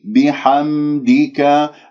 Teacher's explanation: يجب أن تظهر البينية في صوت الميم يجري فيها الصوت فترة زمنية بسيطة